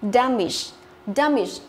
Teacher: tức là trọng âm của nó rơi vào âm thứ nhất